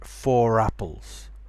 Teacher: more and more people are starting to pronounce the r when there's a vowel after it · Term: linking R